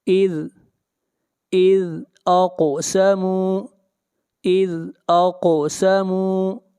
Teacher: قاف کے اوپر قلقلہ ہوگا، آواز کو ہلائیں گے اور قاف کو موٹا پڑھیں گے، قاف حروف مستعلیہ میں سے ہے۔